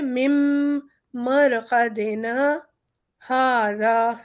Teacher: یہاں پر ہم نون الف پہ سکتہ کریں گے اور پھر ہاذا پڑھیں گے